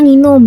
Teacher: Sunda juga punya konsonan awal nasal atau bunyi eng di kata nginum yang nggak muncul di bahasa Indonesia standar